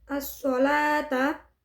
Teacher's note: Alif lamnya dihukumi dengan asyamsiyah karena bertemu dengan Shad cara membacanya adalah dimasukkan kepada huruf Shad